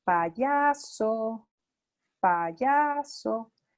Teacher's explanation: esa inflexión que hice fue poner cada una de las sílabas de la palabra payaso en distintas frecuencias